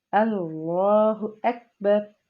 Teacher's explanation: لام کے اوپر کھڑا زبر ہے اس لیے ایک الف کے برابر اس کو ہم لمبا کر کے پڑھیں گے · آگے کیونکہ ہم نے سٹاپ کرنا ہے اس لیے ہم را کے اوپر جو پیش ہے اس سے ختم کر کے اس کو جزم دے دیں گے